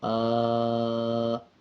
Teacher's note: کھڑا زبر 1 سیکنڈ لمبا کر کے پڑھا جائے گا